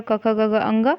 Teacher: उच्चारण स्थान क्या है, कंठ है